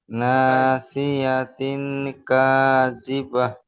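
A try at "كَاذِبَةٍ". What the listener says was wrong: কাযিবাতিন আছে, ওটা হে নেই, তা জেজের তি। কাযিবাতিন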